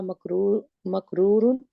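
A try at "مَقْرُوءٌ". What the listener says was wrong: मकरूउन नहीं कहना, वाउन के नहीं, ये हमजा के ऊपर तनवीन है। मकरूउन,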